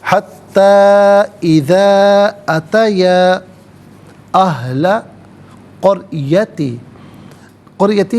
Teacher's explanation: قریتی میں را ساکن ما قبل قاف پر زبر ہے، را ساکن کو پر کر کے پڑھا جائے گا۔